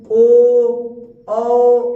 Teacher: अगर हम लोग ओष्ठ को गोला करके बोलते हैं वो होता है वर्तुल्य